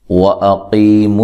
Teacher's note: یا ساکن سے پہلے حرف پر زیر ہو، یا ساکن سے پہلے حرف کے نیچے کیا ہو، زیر ہو، تو اس کو یا مدہ کہا جاتا ہے، اور یا مدہ جو ہے اس کو ایک الف کی مقدار کے برابر لمبا کرنا ہے · واو کو ادا کرتے ہوئے ہونٹوں کو گول کرنا ہے، حمزہ کو تحقیق کے ساتھ پڑھنا ہے اور لمبا نہیں کرنا۔